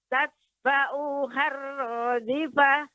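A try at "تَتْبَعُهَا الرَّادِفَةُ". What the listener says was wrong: Baik, tapi ain tadi Ibu membaca agak lebih panjang. Seharusnya pendek. Langsung. Tatba'uhar radifah.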